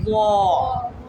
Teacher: زبان کی نوک اوپر والے جو ہمارے 2 دانت ہیں اس کے کنارے کو لگائیں گے تو ادا ہوگا زواں